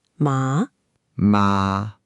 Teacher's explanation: the second tone rises, like when you're asking, Huh? or What?